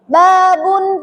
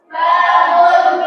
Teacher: Di sini ada huruf penting yaitu ba. Ba itu makhraj hurufnya itu ada di bibir yang mana bibir itu menutup rapat atau yang dinamakan asyafatani.